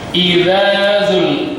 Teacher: tipis di ujung lidah ya, sedikit bersentuhan dengan gigi atas tapi tidak terlalu bersentuhan